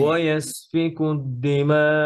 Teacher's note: শেষের হামজাটা একটু ধাক্কা দিবেন যেন হামজাটা ক্লিয়ার হয়